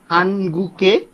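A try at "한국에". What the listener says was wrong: হবে না। হানগুক কেন হবে? এখানে তো পরের একটা আমাদের স্বরবর্ণ আছে, তাহলে ভাচ্চিম গিয়ক, ওই স্বরবর্ণের জায়গায় চলে গেলে ও কি হবে? হানগু গে, হানগু গে।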